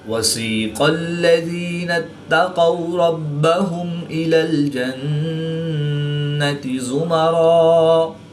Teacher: قاف حرف مستعلیہ میں سے ہے تو اس کو پوری یعنی موٹا پڑھیں گے۔ واو ساکن سے پہلے قاف پر زبر ہے تو واو لین ہوگا، اس کو لمبا نہیں کریں گے۔ را کے اوپر زبر ہے تو را کو پوری یعنی موٹا پڑھیں گے۔